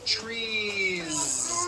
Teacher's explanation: it plural is you continue the voicing throughout the whole word and add on a voiced Z. · It's not trees with an unvoiced S.